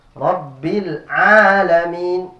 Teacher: Jadi ain ini makhrajnya di tenggorokan, bukan dari hidung. Jadi bukan alamin.